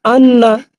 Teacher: নুনের উপরে তাজদিদ থাকলে গুন্না করে পড়তে হয়, গুন্না করে